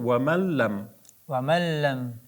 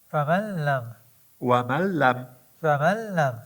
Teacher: Buni burunni bekitib ham bemalol o'qiy olasiz. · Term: g'unnasiz idg'om